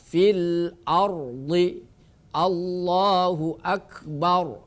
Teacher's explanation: Ketika ro ini ro sukun didahului oleh fathah atau dhammah, maka ro sukun menjadi tafkhim.